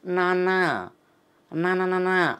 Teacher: నాలుకని దంత మూలాన్ని తగులుతాం దంతాన్ని కాకుండా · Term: నకారం